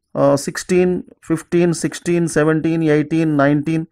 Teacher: the words they end with teen, they take stress on teen itself.